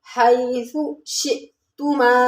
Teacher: یا لین ہے، نرمی اور جلدی کے ساتھ پڑھیں گے، اور سا جو ہے یہ نرمی والے حروف میں سے ہے، یعنی ہم نے زبان کی کنارے کے اوپر والے دانتوں کے سرے سے لگانا ہے ، حیثو شئتما۔ شئ میں حمزہ ساکن ہے، جھٹکے کے ساتھ